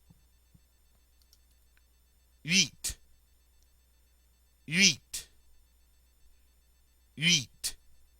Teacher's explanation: like you're saying a long e through rounded lips